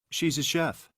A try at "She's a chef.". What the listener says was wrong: Very good. She's or she is a chef. Very good.